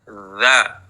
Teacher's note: Sekarang, keduanya memiliki makhraj yang sama di ujung lidah yang bertemu dengan ujung gigi seri atas